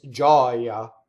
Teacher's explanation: the accent ends on the O when it's the noun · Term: open O